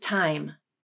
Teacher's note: Watch my mouth position as I say the word time. At the beginning of the vowel, the jaw is dropped low. The tongue is also low, and the tongue tip touches the back of the bottom front teeth. Then as I progress to the second sound of the diphthong, the jaw closes and the tongue arches up closer to the roof of the mouth. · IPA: /aɪ/